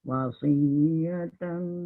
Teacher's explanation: Tal tak ada dengung, tak boleh lama-lama, terus jalan.